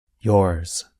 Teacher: if you listen carefully, you can hear a bit of the sound of the letter S at the end of a word like yours. So the sound of Z is not as strong or as long as in a word like zero. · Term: a Z with a little S